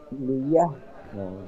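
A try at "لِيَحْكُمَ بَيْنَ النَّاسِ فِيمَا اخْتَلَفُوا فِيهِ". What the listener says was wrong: লিয়াহকুমা। এটা ইয়াটা তা হয়ে গিয়েছে, মানে নক্তা দুটো উপরে হয়ে গিয়েছে, সেরকমই আর কি। লিয়াহকুমা বাইনান নাসি ফীমা ইখতালাফু ফীহি।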